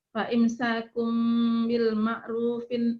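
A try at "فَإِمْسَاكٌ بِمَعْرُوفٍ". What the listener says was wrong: Nggak pakai apa, Bu? Nggak pakai al, Bu. Fa imsakum bima'rufin.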